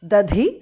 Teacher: Dadhi, second dhas mahapranah.